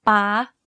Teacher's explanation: In this tone, your pitch needs to be high. Stressing your syllable when speaking is also ideal in this tone. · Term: high tone